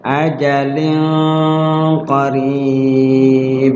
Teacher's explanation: ajalin qarib, ila juga mad jaiz ajalin qarib. Ajalin di situ ada kasrotain atau tanwin ketemu qaf, adalah ikhfa, ya, disamarkan tanwinnya